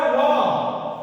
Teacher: तो व का उच्चारण स्थान दंत और ओष्ठ दोनों है। इसलिए व को हम लोग दंतोष्ठरा वर्ण कहते हैं।